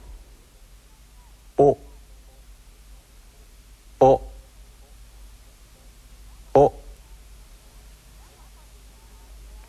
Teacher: The final Japanese vowel O is also sharp and short in duration. Be very, very careful not to stretch it into the diphthong O. Keep it short and clipped.